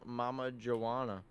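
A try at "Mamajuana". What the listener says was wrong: you don't pronounce the j it's like moana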